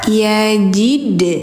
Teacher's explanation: dal memiliki sifat pantul qalqalah